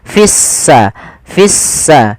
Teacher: lamnya dianggap tidak ada sehingga langsung diidgamkan ke huruf Sin sehingga sinnya berharakat tasdid seakan-akan s-nya dua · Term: alif lam syamsiyah